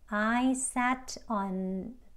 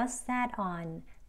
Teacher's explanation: T가 리을 소리에 가깝게 들리죠? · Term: flap T